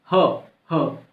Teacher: वायु तेजी से निकल ली तो महाप्राण। ठीक है, और कंपन भी हो रहा है, सघोष, ह कंपन भी हो रहा है, सघोष, तो महाप्राण सघोष ह है।